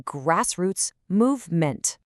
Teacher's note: The emphasis here falls really heavily on the first syllables of both words.